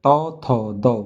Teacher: दंत से बोला जाता है